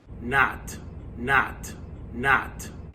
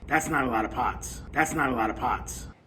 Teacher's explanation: If they say it with an ah, that's not a lot of pots, they're probably from New York.